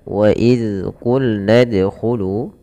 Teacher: Zal tempat keluarnya adalah dari ujung lidah kita menempel dengan gigi seri atas. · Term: huruf zal